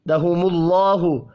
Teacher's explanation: اللہ کا نام پیش کی وجہ سے پر پڑھا جائے گا